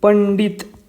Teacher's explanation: पंडित या शब्दाचा उच्चार हा न प्रमाणे होतो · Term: अनुस्वाराचा उच्चार